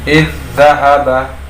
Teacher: memasukkan za yang pertama ke dalam za yang kedua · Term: idgham mutamatsilain